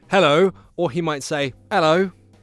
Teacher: Sometimes he drops the H, sometimes he keeps the H. So he might say hello, or he might say hello. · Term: The H sound